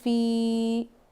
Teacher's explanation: زبان کے بیچ کے حصے سے یا ادا ہوتا ہے. یہاں یا ساکن سے پہلے زیر یا مدہ ہوگا.